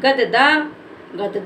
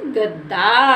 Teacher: आधा दा है और आधा दा को हम पढ़ेंगे द और इसके बोलने में ज्यादा समय नहीं लेंगे और आ की साउंड की मात्रा का उच्चारण भी नहीं करेंगे